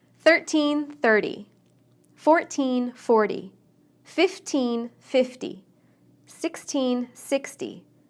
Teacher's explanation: We stress teens on the second syllable and tens on the first. The T in the teen number sounds like T, but the T in the tens sounds more like D.